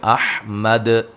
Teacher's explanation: وقفاً دال کو خوب اچھی طرح واضح قلقلہ کریں گے